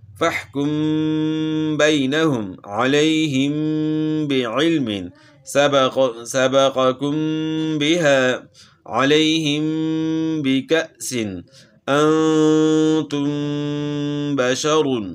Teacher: میم ساکن کے بعد اگر با آ جائے تو وہاں غنہ اخفا کے ساتھ ہوتا ہے